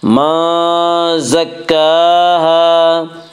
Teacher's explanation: کاف کے اوپر کھڑا زبر ہے، کھڑا زبر کو ایک الف کے برابر کھینچ کر پڑھیں گے۔